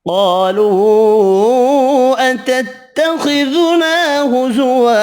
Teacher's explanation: قاف حروف مستعلیہ پر پڑھیں گے، الف مدہ ایک الف کی مقدار میں، چھوٹی مد تین الف کی مقدار میں کھینچ کر پڑھیں گے۔